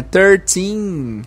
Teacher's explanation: Esse teen tem que ser longo, tem que fazer essa esticada no i.